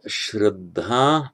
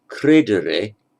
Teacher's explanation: the sound sh in Sanskrit often becomes a k in Greek and Latin